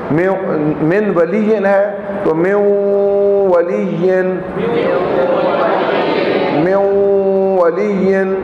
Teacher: ادغام بھی ہوگا اور نون کی آواز ہوگی تو غنہ بھی آ جائے گا